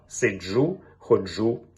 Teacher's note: маємо виразно африкату Дж у словах